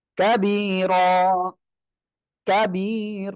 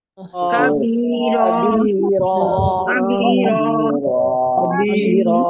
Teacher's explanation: ওয়াকফের সময় শব্দের শেষে দুই জবর হলে এক জবর বাদ দিয়ে এক আলিফ টেনে পড়তে হবে। যেমন কাবিরন, কাবিরন আমরা এখানে ওয়াকফ করলে এক জবর বাদ দিয়ে এক আলিফ টেনে পড়বো। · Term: এক আলিফ মাদ